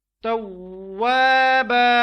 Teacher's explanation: تو اس لیے اس کو ہم نے کھینچ کے پڑھا ہے ایک الف کے برابر. توابا، واو کے بعد الف ہے اور الف سے پہلے واو کے اوپر زبر ہے، تو اس کو وہی الف کی مقدار کے برابر پڑھیں گے. اور وقف کی حالت میں یہ جو توابن ہے اس میں سے ایک زبر ہم نے منہا کر دی ہے اور باقی ایک زبر آ گئی ہے، تو اب ہم اس کو توابا وقف کی حالت میں پڑھیں گے.